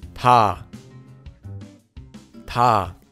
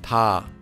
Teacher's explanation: It's between t and d and is a bit softer. We can combine this consonant with our vowel ah and hear it sound directly.